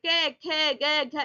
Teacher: हवा जो है सिर्फ मुंह से निकल रही है, नाक से नहीं निकल रही है। जब भी नाक से हवा आ रही होगी वो आपके अनुनासिक बन जाएंगे। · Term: निरा अनुनासिक